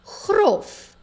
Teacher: Grof het 'n kort o klankie in en eindig natuurlik op 'n f klankie. The word grof, which means rough, has a short vowel sound, a short O, and ends on a F.